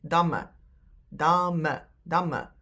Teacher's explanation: We don't pronounce damme. When we speak, we usually just pronounce one M